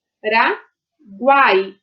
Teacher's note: Olha aqui, ó, U, A, I. Nós temos três vogais juntas na mesma sílaba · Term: tritongo